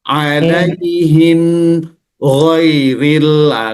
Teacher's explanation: Karena mim itu dia tawassut bainiyah. Ada suara yang harus dialirkan.